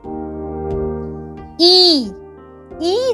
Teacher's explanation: ই ই যখন আমরা বলছি, দেখো জিভটা সামনের দিকে এগিয়ে এসেছে, তোমার ঠোঁটটা কিন্তু অনেকটা ছড়িয়ে গেছে। ই বলবার সময় জিভটা সবচেয়ে উঁচু জায়গায়, আর মুখের মধ্যে ফাঁকা অংশ প্রায় নেই।